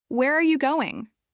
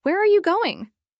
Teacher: Where are you going? With a rising tone. While that's not always wrong, it often made his questions sound like he was unsure or nervous. · We practiced keeping the tone down at the end.